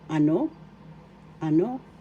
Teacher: First syllable a, second syllable no. The accent is in the second syllable. Ano? Ano?